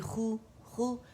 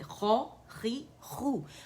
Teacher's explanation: اسے دیکھیں ایسے نہیں پڑھیں گے خو خو, یہ موٹائی میں کمی ہو گئی ہے. اس میں تیسرے درجے کی تفخیم ہے, تو اس کو موٹا پڑھیں گے